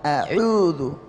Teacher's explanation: Ada yang mengidentikan ain itu dengan hidung. Ain yang benar tanpa kena hidung. A'udzu kita pencet hidung, saya pencet a'udzu tanpa kena hidung.